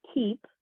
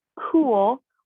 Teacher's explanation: The k in keep is pronounced farther forward in the mouth, keep, whereas the k in cool is pronounced farther back in the mouth, almost in the throat.